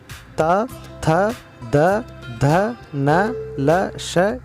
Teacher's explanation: इनका उच्चारण जीभ के ऊपरी दांतों से टकराने से होता है, ये दांत से निकलते हैं, इसलिए आपको यहाँ पर भी ये याद रखना है।